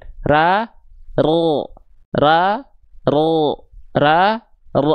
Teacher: Mulut kita cukup dibuka. Kalau pangkal lidahnya nggak naik, turun, vokalnya pasti A. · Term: pangkal lidah turun